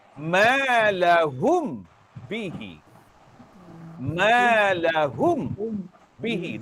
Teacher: Bacaan asal dalam bahasa Arab, ia dibaca dengan dengung satu harkat.